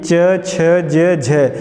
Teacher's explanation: ये चार जो आपकी ध्वनियाँ जो हैं कैसी हैं, स्पर्श संघर्षी हैं।